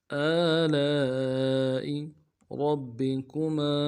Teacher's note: را کو موٹا کرنا ہے، با کے ساتھ ملائیں گے، با کے اوپر تشدید زور دیں گے ، اگلے با کو نون سے ادا کریں گے، کاف کو